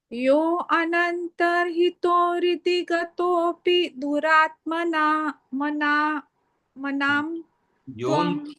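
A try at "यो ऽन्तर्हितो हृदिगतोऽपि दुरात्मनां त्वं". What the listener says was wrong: Yontarhito hridigatopi duratmanam tvam. There is no extra pronunciation for that avagra symbol. He has pronounced like that only. Yontarhito hridigatopi duratmanam tvam.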